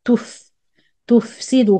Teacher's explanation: The فاء has رخاوة and air.